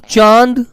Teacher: ये जो चंद्र बिंदु होता है, इसकी आवाज नाक प्लस मुंह दोनों से आती है